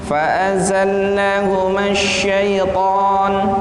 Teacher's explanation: Ta di situ mat tabi'i, panjangnya 2 harokat atau 1 alif.